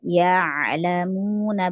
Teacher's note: Hamzah pada kata kata ya'lamuna, bukan ya lamuna, ya itu jadi hamzah, tapi ya'lamuna. Ain itu punya sifat tawassut, jangan dialirkan ya gitu, enggak. Ya'lamuna sedikit aja alirannya, dia kena punya sifat tawassut.